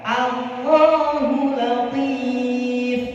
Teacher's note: Jadi a tetap a, tidak menjadi o.